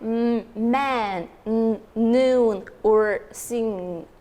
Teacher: The stream of air is blocked completely in our mouth and it released out of body with the help of nose. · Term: nasals